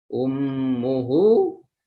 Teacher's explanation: yaitu mim bertasjid dibaca dengung